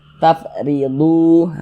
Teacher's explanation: huruf rnya kita tipiskan sehingga pangkal lisan kita itu tidak naik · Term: tarqik, dibaca tipis